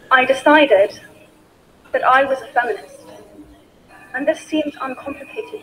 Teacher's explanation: The speaker has used short falling tone intonation.